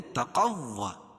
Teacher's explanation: تا کو باریک اور قاف کو موٹا پڑھیں گے. قاف کو واو میں ملائیں گے.